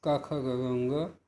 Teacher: तो अ इसका सूत्र है संस्कृत में अकुह विसर्जनीय नाम कंठ, अर्थात अ, क वर्ग, ह और विसर्ग का कंठ स्थान होता है